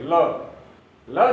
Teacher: र, र उच्चारण करके देखिए, जिह्वा का अगला भाग थोड़ा सा लुढ़कता है, र। और ल, ल जाकर मसूड़े से चिपकता है, जिह्वा का अग्रभाग, और अगल बगल से हवा निकल जाती है, इसलिए उसे पार्श्व ध्वनि कहते हैं। पार्श्विक यानी अगल बगल से हवा पार्श्व से निकल जाती है।